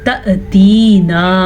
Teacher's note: حمزہ پہ جب ساکن آئے تو جھٹکے کی کیفیت پیدا ہوتی ہے ہلکا سا